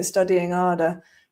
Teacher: there are quite a lot of British accents where the H gets dropped